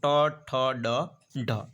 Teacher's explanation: મૂર્ધન્ય તો ટ ઠ ડ ઢ એ મૂર્ધન્ય છે